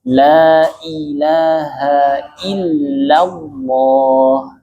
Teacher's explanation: La tipis, ilaha illallah, lawah. La yang pertama tipis, Allah baru tebal. Lawah. Lam jalalahnya baru tebal.